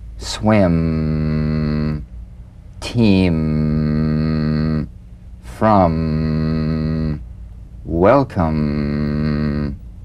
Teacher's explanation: the M is a nasal labial consonant made with the lips to feel the am simply allow your lips to meet very